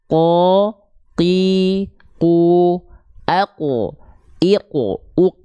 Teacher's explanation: dia enggak ada percikan nafas dia lebih dalam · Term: qof